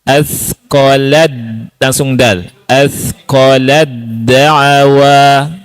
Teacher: Itu taknya nggak dibaca. Tidak ada hamasnya, langsung ke dal.